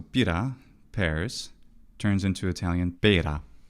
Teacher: The short I merges with long e